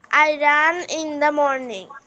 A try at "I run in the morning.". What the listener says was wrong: হ্যাঁ, ওকে, তোমার মুখ নড়ছে না, মুখ নাড়াতে হবে। I run in the morning, ওকে, যাতে আমি দেখতে পারি। ওকে, তুমি মুখ নাড়াবে।